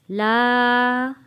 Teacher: لا ہم نے اس کھینچ کے پڑھا کہ اس کے اوپر چھوٹی مد ہے